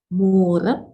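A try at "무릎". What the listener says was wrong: Benar.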